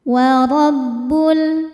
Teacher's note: Ro dibaca tafkhim karena berharakat fathah maka dibacanya tebal. Warabbul. Lalu ada alif lam qamariah.